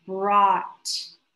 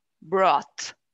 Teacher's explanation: sound of t and finally is pronounced more with more force the vowel sound is less of an o and more of an ah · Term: ah sound